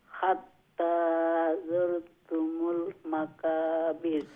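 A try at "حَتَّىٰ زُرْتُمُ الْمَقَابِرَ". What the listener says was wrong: কফকে এটা হচ্ছে গিয়ে বড় কফ, নক্তালা কাফ, তো এইটাকে মোটা করে সাউন্ডটাকে উচ্চারণ করতে হবে, ঠিক আছে? মাকাবির।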